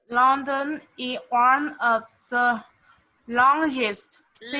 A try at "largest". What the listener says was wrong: largest. La. Open your mouth. Lar. Lar. Largest. Largest. No. Lar. Lar. J. J. J. J. You read this letter G as letter J. Largest. Large. Largest.